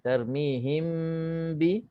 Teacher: Ikhfa syafawi mim mati bertemu dengan ba, maka dengung dua harakat